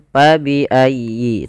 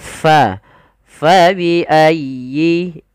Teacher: Jangan pa bi ayyi, tapi fa dialirkan nafasnya. Karena huruf fa memiliki salah satu sifat, yaitu sifat hamus. Artinya mengalirnya nafas kita.